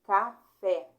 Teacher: oxítona a última mais forte